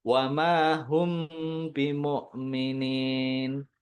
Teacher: Wama hum harus ada dengungannya, ditahan dulu sebentar.